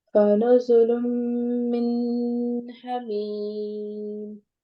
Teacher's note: میم کے نیچے زیر ہے اور یا ساکن ہے. جب یا ساکن ہو اس سے پہلے زیر ہو، یہ یا مدہ ہوا، ہم اس کو 2 سیکنڈز کے لیے کھینچ کے پڑھیں گے. اور یہاں پہ آگے تنوین آ رہی ہے تو ہم وقت کی حالت میں ہم اس کو جو ہے ساکن کر دیں گے.